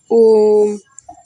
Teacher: जिसके उच्चारण में दीर्घ स्वर से भी ज़्यादा समय लगता है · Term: प्लुत स्वर